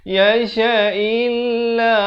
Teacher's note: Kena baca mai dua harakat barulah yasha illa. Lafz jalalah ini baca nipis. Jangan baca tebal. Jangan baca yasha illallah.